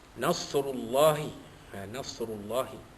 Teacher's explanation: Ru itu dibaca tebal kerana ia baris hadapan tafkhim, bersambung dengan Allah lafzul jalalah dibaca tebal kerana huruf sebelumnya huruf ra itu baris hadapan.